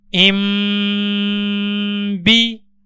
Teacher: اب اس باکس کے اندر نون ساکن کے بعد با موجود ہے، تو نون کی جگہ میم کو پڑھیں گے۔